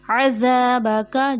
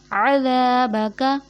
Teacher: زال نرمی سے ادا ہوتا ہے جبکہ غلطی یہاں پہ زا ادا کر دیا جاتا ہے